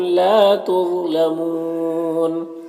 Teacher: وقف کریں گے تو نون کا زبر سکون سے بدل جائے گا تو مد عارض وقفی ہوگا۔ اس میں طول، توسط، قصر تینوں جائز ہوتا ہے۔